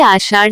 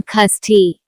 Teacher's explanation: अंगिका भाषी मुख्यतः मूर्धन्य श के स्थान पर दंत स कहीं कहीं छ या ख का उपयोग करना अधिक पसंद करते हैं। इनका उपयोग करना मूर्धन्य श से काफी आरामदायक होता है। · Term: मूर्धन्य श से ख होना